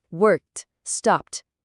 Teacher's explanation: se o verbo termina num som surdo, aquele que não vibra as cordas vocais, tipo p, k, s, o ed soa como um t bem seco